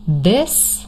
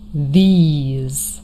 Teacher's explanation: The difference between the last two words is a short I and a long E sound.